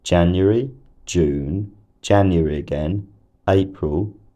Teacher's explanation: She uses a rising nuclear tone on January and June, and then a full rise nuclear tone on January again, and what I'd call another full rise on April.